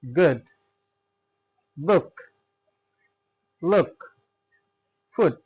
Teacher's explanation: So while pronouncing uh the short oo sound your lips are slightly rounded. Okay. And the sound is short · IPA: /ʊ/